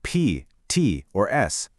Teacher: For what we call voiceless sounds, think of sounds like P, T, or s. The vocal cords are just held open. They're relaxed. The air just rushes straight through. No vibration.